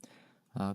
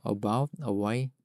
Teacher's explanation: 입모양도 겨우 입술만 살짝 뗀 정도에서 성대 목소리만 내주는 거죠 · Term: 슈아